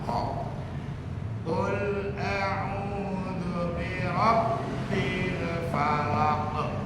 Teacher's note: Qalqalah kubra. Harus dikuatkan pantulan.